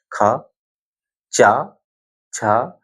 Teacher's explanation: देखो, जो अघोष है, ये घोष भी बोलते हैं, अघोष है, इसमें देखिए क्या का झंझन, जो तंत्रियां हैं वो कंपन ज्यादा नहीं कर रही हैं। ख, चा, छा, जैसे ही मैं गा, देखिए गा, बिना तंत्रियों के कंपन के नहीं बोल सकते आप।